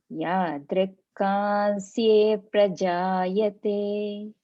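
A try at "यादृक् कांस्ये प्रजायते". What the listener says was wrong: Yes.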